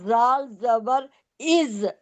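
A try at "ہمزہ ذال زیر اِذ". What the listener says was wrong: نہیں، زال زیر. زیر ہے نا.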